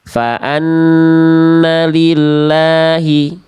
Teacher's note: nun ketika bertasdid ya, punya hukum namanya gunnah. Gunnah itu artinya dengung dan ditahan 2 harokat.